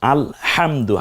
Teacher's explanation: হাটাকে colour করা হয়েছে এজন্য যেহেতু এটা কণ্ঠনালীতে চাপ দিয়ে উচ্চারণ করতে হয়